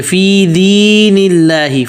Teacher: فی ایک الف مد کے برابر کھینچیں گے